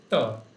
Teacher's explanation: tongue is coming between the teeth. So t is a dental sound.